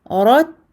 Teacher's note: On entend le hems ici, au niveau du ta sakin, le petit souffle qui sort en même temps.